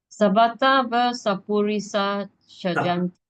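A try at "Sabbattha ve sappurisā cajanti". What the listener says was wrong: So here ve, here va. Ve va.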